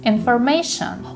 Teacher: information the stresses on the third syllable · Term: stressed syllables